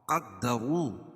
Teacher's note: را کو پر پڑھیں گے کیونکہ را کے پر پیش ہے، اور واو ساکن سے پہلے را کے پر پیش ہے تو وہ مدہ بھی ہوگا.